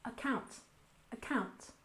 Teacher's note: account we stress the second syllable